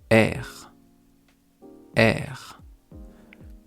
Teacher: R En fait, vous allez faire le son E qui est un e avec un accent grave et on rajoute le R derrière. R ça vient vraiment du fond de la gorge.